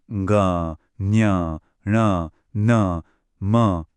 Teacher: इन्हें नासिक्य कहते हैं क्योंकि इनकी आवाज नाक से आती है। और ये जो नासिक्य हैं, ये ना तो अल्प प्राण होते हैं और ना ही महाप्राण।